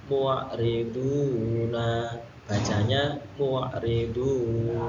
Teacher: Hukum bacaannya adalah mad aridil lisukun atau mad arid lisukun. Panjangnya berapa Pak? Panjangnya yaitu 3 harokat atau 1,5 alif.